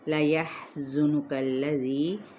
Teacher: ہا پہ ہم نے ہمس بھی کرنا ہے، باریک بھی ادا کرنا ہے